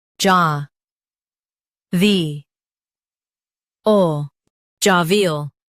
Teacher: Stress ja and keep V bright.